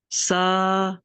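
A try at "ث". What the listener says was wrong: जुबान की कहाँ लगती है? कौन सा हिस्सा जुबान का? जुबान का सिरा या जुबान का किनारा एज, जो भी कहें, किनारा कहें या सिरा कहें, ठीक है। सीन की आवाज ना आए। सा सा सा नरम भी है।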